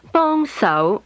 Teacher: Is high falling, mid rising.